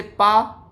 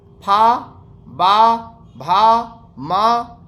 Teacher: ओष्ठ यानी कि जिन वर्णों का उच्चारण करते समय दोनों ओष्ठ आपस में टकराते हैं उन्हें ओष्ठ वर्ण कहा जाता है। जैसे पा, जब पा बोलते हैं तो दोनों ओष्ठ आपस में टकराता है